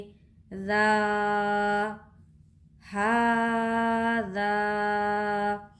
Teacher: नरमी होनी चाहिए ज़ाल की अदायगी में। ज़ाल का मखरज क्या है, ज़बान की नोक और तनाया औलिया का किनारा